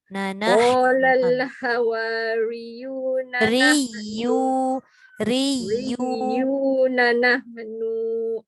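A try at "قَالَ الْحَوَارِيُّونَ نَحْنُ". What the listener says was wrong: No tak panjang juga. No tak boleh panjang. Tak ada waw. Qala, dengar dulu Qala al-hawariyuna nahnu ansarullah.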